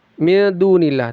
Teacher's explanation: nun sukun bertemu dal ikhfa disamarkan lalu didengungkan. Min dunillah du panjangnya dua harakat mad asli.